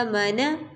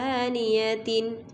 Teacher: اب الف جو ہے، حمزہ جو ہے، اس کے اوپر کھڑی زبر ہے، اس کو ایک الف کے برابر کھینچیں گے اور باقی میم اور نون کو نہیں کھینچا جائے گا۔